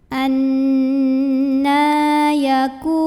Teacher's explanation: Nah, mad asli atau mad tabi'i karena ada baris fathah tegak di atas huruf nun, maka nunnya dipanjangkan sepanjang 2 harokat saja. Anna yaku. Ku mad tabi'i karena ada waw sukun yang didahului dhammah, maka kaf yang dhammah kita panjangkan 2 harokat saja.